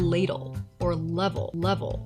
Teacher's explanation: that first l is a clear l you can probably feel your tongue touching the top of your mouth right behind your teeth · the l at the end of the word is a dark l where the tip of the tongue might not even touch the top of your mouth at all